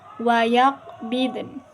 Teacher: kita ketemu lagi nih sama qalqalah. Qaf yang berharokat sukun.